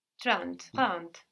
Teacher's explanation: So the N doesn't just disappear, it gets swallowed into the nose a bit, and that affects the vowel before. We see trente is spelled with an E, but we hear something more like an A in trente.